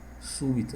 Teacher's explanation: o acento tá na antepenúltima · o acento está na antepenúltima. Se está na antepenúltima, é proparoxítona.